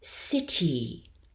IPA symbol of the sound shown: ɪ